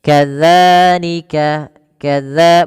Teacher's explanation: Yaitu ujung lidah kita, ujung lidah menempel dengan gigi seri. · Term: huruf zal